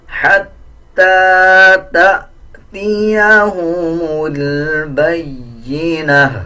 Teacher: اکثر لوگ اس میں غلطی کرتے ہیں، حتی تأتیہم البینہ پڑھ دیتے ہیں، اس طرح پڑھنا غلط ہے، بلکہ اس کو جھٹکے کے ساتھ ادا کیا جائے گا، جیسے حتی تأتیہم البینہ، تا کے اوپر پیش ہے، جب وقف کریں گے تو اس تا کو ہا میں کنورٹ کر دیں گے، آدھا ہا پڑھا جائے گا، اور تا کے اوپر جو پیش ہے اس کو بھی سائلنٹ کر دیا جائے گا۔